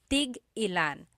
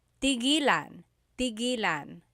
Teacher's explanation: Tig ilan is a homonym, meaning it can have different translations depending on how it's pronounced. So tig ilan, when there's a hyphen in it, you have to have that glottal stop.